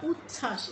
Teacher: এখানে কিন্তু চ ছ দুটো কিন্তু ঠিকই উচ্চারণ করছি শুধু বটি উচ্চারণ করছি না